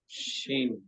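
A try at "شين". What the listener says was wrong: দেখেন আপনারা কিন্তু অনেকে কি উচ্চারণ করতেছেন জানেন? শিন, এরকম অনেকে উচ্চারণ করতেছেন, কিন্তু এমন উচ্চারণ করা যাবে না। শিন, এভাবে উচ্চারণ করতে হবে। শি, এটা বলতে বলতে টেনে যেতে হবে। হ্যাঁ, শিন।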